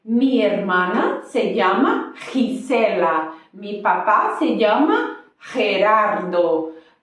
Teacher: ela tem esse sonzinho assim da garganta, como se você estivesse gripado, sabe? Quando ela acompanha a vogal E e I.